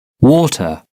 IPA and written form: ˈwɔːtə (water)